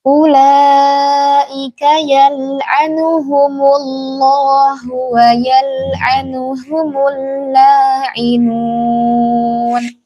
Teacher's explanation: lafzul jalalahnya tebal karena ia sebelumnya huruf yang berharakat dhammah. Jadi dibaca tebal.